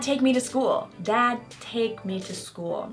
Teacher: so we kind of lose that D sound